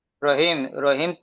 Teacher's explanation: রহিম তিন আলিফ পরিমাণ টান হবে